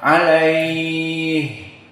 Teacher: Dan jika disukunkan pada ha menjadi mad arid lisukun. Alaih, bisa dibaca 4, bisa dibaca 6.